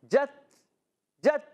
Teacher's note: اچھا بند تو ہوتی ہے مگر صرف بند نہیں، پھر سانس جاری رہتا ہے، آواز آتی ہے جت جت، تو یہ جو آواز آتی ہے نا، یہ سختی کے ساتھ آواز بند ہوئی مگر سانس جاری رہا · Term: شدیدہ میموسا